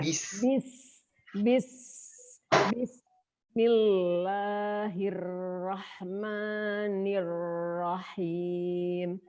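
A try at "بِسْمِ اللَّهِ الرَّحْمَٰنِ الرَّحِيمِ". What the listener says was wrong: Bagus, huruf ro-nya bagus. Ya cuman yang di Rahman kurang tebal. Jadi dari hi langsung ro-nya tebal. Hirro.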